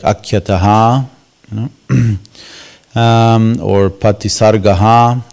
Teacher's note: So the Visarga creates an echo for the vowel before. And the Visarga is fully pronounced when the word is by itself